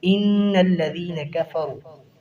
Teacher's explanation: مشدد حرف ہے، اس کی ادائیگی 2 الف ہوگی، غنہ بھی یہاں پر ہوگا۔